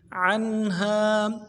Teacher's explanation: عین کو نون کے ساتھ ملانا ہے، نون ساکن ہے یہاں پہ اظہار کریں گے، ہا کے بعد الف مدہ ہے، ایک الف دال میں کھینچیں گے۔